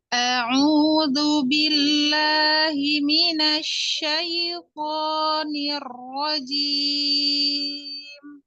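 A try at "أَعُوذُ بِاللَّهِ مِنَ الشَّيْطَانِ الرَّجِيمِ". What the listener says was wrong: Yang pertama tadi agak terlalu tinggi gitu. Kemudian di wazan sabit di huruf jar mina ya sempurnakan kasroh di mim minasyaitonir rajim.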